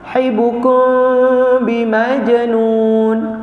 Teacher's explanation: Tapi bila kosong mim tu atas tu kosong dia panggil mim sakinah juga. Sebelah dia ba mesti kena dengung.